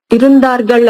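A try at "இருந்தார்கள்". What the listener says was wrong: దార్గల్ కాదు ఇరుంతార్గలే వస్తుంది మనకి ప్రొనౌన్సియేషన్లో త బదులుగా ద వచ్చేస్తుంది అంతే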